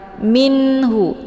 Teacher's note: ada nun sukun menghadapi huruf Ha ini dibacanya jelas ya ataupun diizharkan nunnya karena nun sukun dengan Ha ini dinamakan dengan izhar halqi minhu